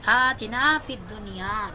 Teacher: آتنا کھڑی زبر ہے، اس کو میں تھوڑا سا لمبا کروں گی